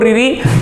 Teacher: कहलाते हैं ये है रिरी आप बोल के देखो रिरी तो जुबान जो है उल्टी होके तालू के ऊपर टकराती है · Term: मुर्धन्य, मूर्धन्य